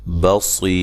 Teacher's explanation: با کو باریک، صاد کو موٹا